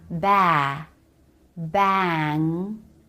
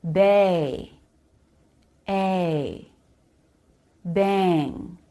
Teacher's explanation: The word bang is pronounced with the B sound, and then the A vowel followed by the NG nasal consonant. When the A vowel is followed by NG, it's no longer the pure A vowel, but something more like the diphthong A. So it's not ba, bang, but bay, a, bang.